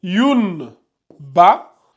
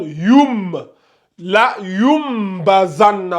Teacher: on a remplacé le N là par M